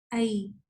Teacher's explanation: आई आप इसके मखरज को जैसे ही आप टच करते हैं तो आप फील करते हैं कि आपकी ज़बान का जो मिडल पार्ट है वो ऊपर को जाके टच होता है